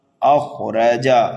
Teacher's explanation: خا کو پر پڑھیں گے اس لیے کہ مستعلیہ میں سے ہے، را کے اوپر زبر ہے اس لیے را کو بھی پر پڑھیں گے، جلدی پڑھیں گے، جیم کو بھی جلدی پڑھیں گے۔